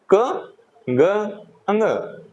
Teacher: अल्प वर्ण, यानी कि जिनमें हमारी जो वायु है मुख से वो कम निकलती है। बोलने पर आपको महसूस होगा इसका।